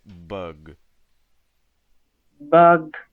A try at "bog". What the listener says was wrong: Open your mouth wider for the first one.